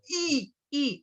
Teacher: Acá arriba es como si uno estuviera incrustando la I. La I de iglesia es I, es acá, sin que salga por la nariz. Es I metida en el paladar.